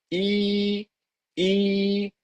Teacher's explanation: the middle section of the tongue rises up towards the palate, the roof of the mouth.